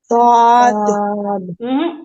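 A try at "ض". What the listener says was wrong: ऐसे सुनाई दे रहा है जैसे तुम पढ़ रही हो तो आद त की साउंड आ रही है।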